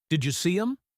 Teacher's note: You becomes yah. Them becomes m. · Leo says, "Did you see them?" In fast speech, this is, "Did you see 'em?" Did might sound like did or did if he is surprised, but usually it is did. You becomes ya. Them becomes em. The sentence is a stream of sound. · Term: connected speech